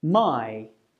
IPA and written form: maɪ (my)